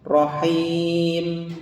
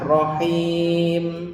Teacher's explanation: Pengucapan mim disukunkan harus jelas, tapi tidak ditahan juga ya.